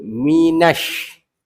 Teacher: Kita jangan baca minal. Sebab dia bukan alif lam qamariyah. Alif lam tu dia dah tak bunyi. Kaedah dia sebab huruf shin tu ada sabdu kan? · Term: Alif lam syamsiah